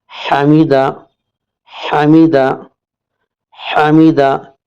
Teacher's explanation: جہاں حلق کے پاس جو گھاٹ نظر آتی ہے وہ بیچ حلق ہے، وہاں سے 2 حروف عین اور حا نکلتا ہے، جیسا کہ حا کی مثال ہے حمیدہ۔ یہاں پر حمیدہ ہا کی طرح نہیں پڑھیں گے، بیچ کے حلق کی طرح حا پڑھیں گے